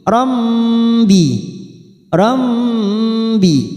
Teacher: fathah tanwin yang bertemu ba, namanya bacaan iklab, membalikkan seperti bertemu dengan mim